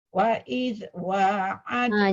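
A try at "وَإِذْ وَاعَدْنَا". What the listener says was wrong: Jaga zal, jangan wa idz.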